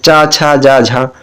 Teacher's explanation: तालव्य की बात करें, जो तालव्य में आता है चा वर्ग होता है